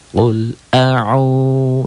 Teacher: domah dengan wau mati dibaca panjang satu Alif atau dua ketukan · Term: Mad thi'i, 2 ketukan